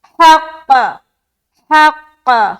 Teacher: थोड़ा सख्त अंदाज में कलकला होगा क्योंकि क्या है, शद है